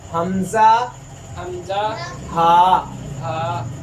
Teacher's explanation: جو حلق کے سب سے نچلا حصہ ہے اس سے حمزہ ہا ادا ہوتا ہے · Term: ادنا حلق